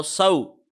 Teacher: اس کو لمبا نہیں کریں گے کیونکہ واو پہ جزم ہے اور پچھلے لیٹر کے اوپر زبر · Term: واو لین